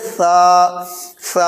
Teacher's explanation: زبان کی نوک یہ ثنایا علیہ کے کنارے پہ لگائیں گے، ایسے کہیں گے سا سا، اور اس میں سیٹی نہ نکلے، ایسے نہیں کہیں گے سا نہیں کہیں گے، بلکہ کہیں گے سا سا۔